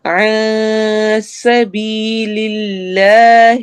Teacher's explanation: میں نون کی آواز کو ہم چھپائیں گے